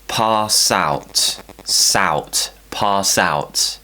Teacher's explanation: Once again, we're linking consonant, vowel